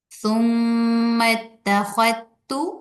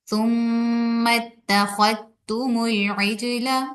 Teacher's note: یعنی تا کو شد کے ساتھ پڑھیں گے اور ہم زال کو تا کے ساتھ مرج کر دیں گے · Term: ادغام